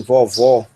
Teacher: o O aberto, como se fosse o nosso O com acento agudo, em vovó, como na palavra pó